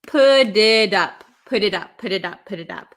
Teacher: And then we have a T, okay? So this, when we have a T sandwiched between two vowels, a lot of the times in American English, it's going to turn into a flap T, which sounds like a D.